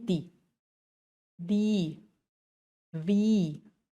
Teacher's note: La E está ahí para acompañar a la I y alargarlo un poquito